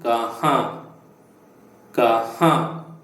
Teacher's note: The N must be pronounced with the nose.